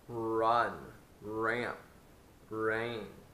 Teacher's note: We want to make that very, very strong by puckering the lips more when we say our R. Also, we want to make less room for the air to flow to make it a louder sound. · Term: strong R sound